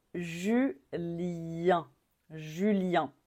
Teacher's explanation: on finit encore avec une voyelle nasale